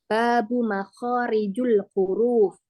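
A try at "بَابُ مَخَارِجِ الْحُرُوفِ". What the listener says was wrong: Kharijil. Jadi kasrah nih.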